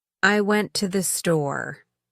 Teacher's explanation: No rise or fall, just a flat delivery. This sounds robotic and lacks emotion. In everyday conversation, you would rarely hear someone speaking with a completely flat intonation unless they're trying to express a lack of enthusiasm or energy.